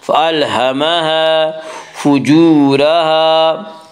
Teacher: فَأَلْهَمَهَا فُجُورَهَا واو مدہ، واو مدہ وہ واو جو ساکن اس سے پہلے پیش ہو، واو مدہ کو ایک الف کے برابر کھینچ کر پڑھیں گے